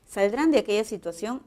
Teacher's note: el tono es ascendente